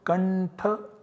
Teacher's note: the nasal substitute of tha, which is nasal na, that becomes the substitute in place of anuswara. So we get the output kantha always.